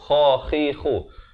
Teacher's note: Terus masuk khala, di hujung kerongkong.